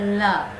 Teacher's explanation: वायु आसपास से निकल जाती है, वे पार्श्विक कहलाती हैं। जिसके उच्चारण में जीवा का अगला भाग मसूड़े को छूता है। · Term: पार्श्विक व्यंजन